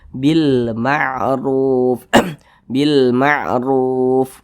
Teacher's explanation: memiliki tanda baca domah maka huruf rnya dibaca tebal dibaca tafkhim jadi pangkal lisan kita itu naik terangkat ke atas huruf r-nya itu kita tebalkan